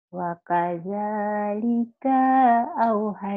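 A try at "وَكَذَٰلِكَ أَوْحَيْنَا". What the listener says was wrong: Pendek, kenapa kanya panjang? Wakazalika auhaina. Wa kadzalika auhaina. Wa kadzalika auhaina. Iya, au-nya. Au-ah gelap. Au-ah gelap gitu.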